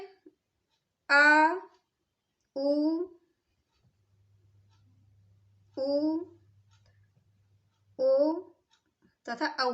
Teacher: जिव्या का जो अंतिम भाग जो सबसे पीछे वाला हिस्सा प्रयोग में लाया जाता है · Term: पश्च स्वर